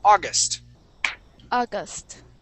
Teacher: So the accent is at the very beginning.